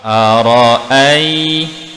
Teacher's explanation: Ra dibaca tebal. Ra beratas dihukumkan tebal, tafkhim.